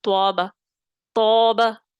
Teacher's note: آواز اوپر کی طرف جائے گی